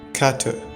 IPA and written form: kætə (kattre)